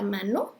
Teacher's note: Si decimos mano, la N ponemos la lengua justo en el paladar.